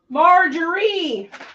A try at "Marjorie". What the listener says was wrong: She put the wrong emphasis on the wrong syllable. Marjorie?